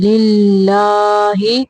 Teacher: اللہ کا لام باریک پڑھیں گے